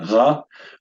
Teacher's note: The resh is pronounced back of the throat. It's known as a guttural.